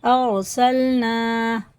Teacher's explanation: الف مدہ ہے تو اسے ایک الف کے برابر کھڑے زبر کی طرح کھینچ کے پڑھیں گے